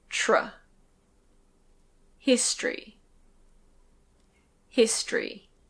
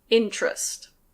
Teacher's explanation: if we drop the schwa, we have a /t/ followed by a /r/. If that happens in English, we often pronounce it chr.